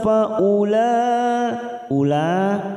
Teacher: Mad yang bertemu dengan Hamzah dalam satu kalimat mad wajib muttasil empat harakat